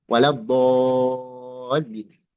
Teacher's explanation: Mad lazim itu dibaca sit harokat, 6 harokat.